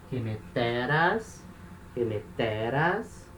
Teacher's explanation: O acusativo, a terminação vai ser um alfa sigma, tá? Então, agora esse alfa vai ser um alfa longo. Então, o acento anda uma casa.